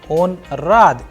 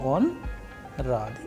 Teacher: So here if you see that the first one when I'm asking a question on rad is he happy? So I'm asking a question the pitch of the sound is going higher. All right. But when I'm answering with the the own so after the there is a pse and then we are saying the on rahi.